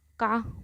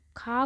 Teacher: जब हम का बोलेंगे का, तो कम वायु निकल रही है, पर जब हम खा को बोलेंगे तो खा को उच्चारण करते समय का से ज़्यादा वायु निकल रही है, इसलिए इसे महाप्राण बोलेंगे।